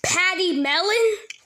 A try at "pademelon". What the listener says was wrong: It's actually pronounced pas de melon. You're saying it as patty instead of paid.